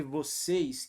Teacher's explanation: Acento circunflexo revela o timbre fechado da vogal.